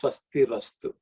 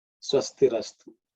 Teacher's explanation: Swastihi Astu becomes Swastirastu. The visarga becomes Ra. Swastirastu.